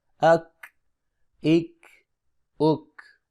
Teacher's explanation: کاف کی آواز باریک اور بغیر جھٹکے کی ہوتی ہے